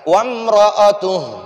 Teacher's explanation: را کو پر پڑھیں گے کیونکہ اس را پر زبر ہے